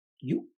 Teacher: So there is this glottal stop and a release